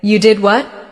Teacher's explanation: with a rising tone at the end, it shows surprise